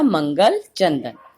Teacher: जिन स्वरों के उच्चारण में हवा केवल नाक से निकलती है वे अनुस्वार कहलाते हैं